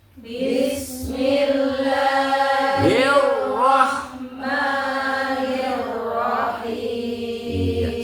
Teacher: Segitu cukup ukurannya. Jangan bismillahirrahman itu kepanjangan ya. Jadi sekedar dua harakat.